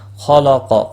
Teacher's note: خا اور قاف دونوں مستعلیہ ہیں، پر پڑے جائیں گے۔